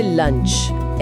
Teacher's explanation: जब एल बोलते हैं तो जीभ ऊपर दांतों के पीछे होती है और अगले ही पल जब यूएनसीएच की आवाज आती है तो जीभ सीधे नीचे आ जाती है।